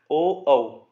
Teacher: आवाज कंठ से आ रही है लेकिन होठ भी गोल हो रहे हैं।